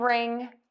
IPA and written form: rɪŋ (wring)